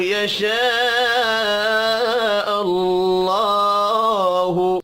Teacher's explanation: یشاء الف کے اوپر بڑی مد ہے، 5 الف کے برابر کھینچ کر پڑھنا ہے. اللہ، اللہ کا نام پیش کی وجہ سے پر پڑھا جائے گا.